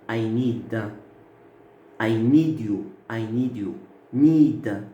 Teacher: la voyelle, le I, c'est prolongé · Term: durée vocalique